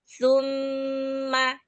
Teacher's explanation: Mimnya nanti jangan dipanjangkan, hanya menahan ghunah atau dengungnya